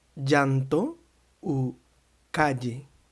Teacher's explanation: Quand on a double L, il sonne J, comme en je ou Jean, mais un peu plus fort, comme si on ajouterait un de avant le je, comme en llanto ou calle.